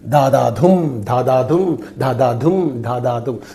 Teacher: So 2 unstressed plus 1 stressed. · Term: anapestic meter